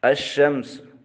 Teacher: رسم الخط کے طور پر لکھا جائے گا مگر تلفظ سے لام ساکت ہو جائے گا، یعنی مدغم ہو جائے گا۔ الشمس، اب یہاں لکھا گیا ہے لیکن پڑھا نہیں گیا، بلکہ یہ لام شین حروف شمسیہ میں سے ہے اور اس کے اندر یہ مدغم ہو چکا ہے۔ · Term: لام تعریف میں ادغام